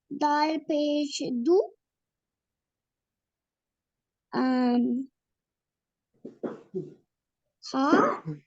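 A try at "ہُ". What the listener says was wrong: This is not dal. This is ha. Ha pesh hu.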